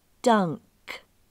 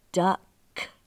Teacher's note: the vowel U is making the ah sound in all of these words